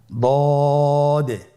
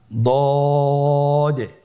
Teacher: দদের মাখরাজ জিহ্বার গোড়ার কিনারা সামনের উপরের 2 দাঁতের গোড়ার সঙ্গে লাগিয়ে উচ্চারিত হয়।